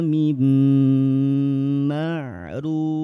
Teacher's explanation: nun sukun bertemu dengan mim dibaca tahan dua harakat sambil nun sukunnya dimasukkan ke dalam huruf mim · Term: idgham bigunah